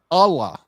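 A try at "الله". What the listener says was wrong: Yeah, pronounce both L's.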